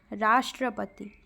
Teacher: राष्ट्रपति शब्द का उच्चारण करते समय रा पर बल पड़ता है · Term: बलाघात